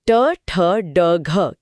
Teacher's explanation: जीभ थोड़ा और मुड़कर कठोर तालु यानी मूर्धा को छूती है जो ट वर्ग ट ठ ड घ की जगह है।